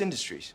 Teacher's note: syllable indicates where the accent of stress is in this case the accent is in the first syllable corresponding to in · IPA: ˈɪn də stri